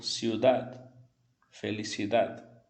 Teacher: O D você vai encostar a língua no dente, mas não vai pronunciar totalmente o D. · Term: D bem leve